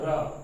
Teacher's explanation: उत्क्षिप्त का मतलब होता है जीभ है, बोलते हैं तो ऊपर चली जाती है, उछलती है मुंह के अंदर। उत्क्षिप्त र, जो अपन र का उच्चारण करेंगे अपनी जीभ है वो मुर्दा के ऊपर चली जाएगी।